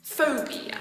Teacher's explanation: that's a three syllable word with the stress on the first syllable